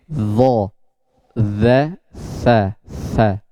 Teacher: ujung lidah itu bertemu dengan dua gigi seri, atas dan bawah.